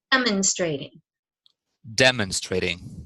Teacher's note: So it'd be demonstrating, demonstrating. So the first syllable is the stress, and the second stress is not the second syllable; it's the third syllable.